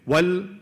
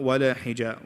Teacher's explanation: Wal, no qalqal on the lam, not wala hija. Wal, hold on to it. And the second thing is the hams at the end of the word.